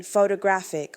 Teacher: Secondary stress appears in longer words and represents moderate emphasis, as in photographic, where we have secondary stress on the first syllable and primary on the third